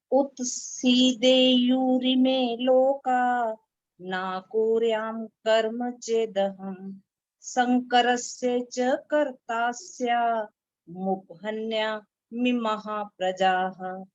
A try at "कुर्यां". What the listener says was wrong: आपने जहां पर कुरियाम वर्ड बोला, क को बड़े ऊ की मात्रा बोली ना, कुरियाम। हाँ ठीक है, आवाज लंबी नहीं, कुरियाम।